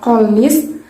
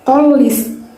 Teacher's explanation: fonem N diasimilasikan dengan fonem L yang mendahuluinya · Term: asimilasi progresif